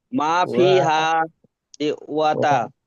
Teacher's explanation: হাটা টান হবে আর ওয়াটা টান হবে না